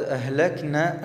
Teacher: عندنا الحرف مخرج الحلق، عندنا الهاء في كلمة أهلكنا